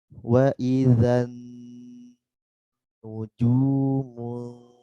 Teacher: Setelah huruf dzal masuk huruf nun dan ditahan. Nun tasydid ditahan.